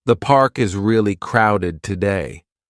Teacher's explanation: The falling tone at the end makes it clear this is a comment, not a question. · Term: intonation